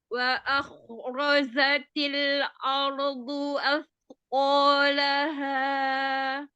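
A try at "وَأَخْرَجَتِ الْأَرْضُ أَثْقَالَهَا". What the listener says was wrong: Ya, hamzahnya masih ar ya. Ar. terus mau waw itu di awalan itu dia harus memonyongkan kedua bibir. Kena makhraj yang waw apa? Memonyongkan kedua bibir. wah, enggak wah, tapi kayak kita mengucapkan huruf u. Wa akhrojatil jim ada sifat jahar. Jadi jangan sama seperti huruf zai nanti. Za gitu ya. jangan samar. Semua huruf jahar itu jelas pengucapannya, tidak boleh ada samar.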